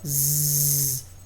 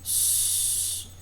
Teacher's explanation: O Z é sonora, Z, o S é surdo.